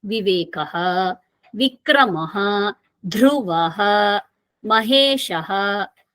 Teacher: One common feature you all might be observing, after each name you find Visarga sound.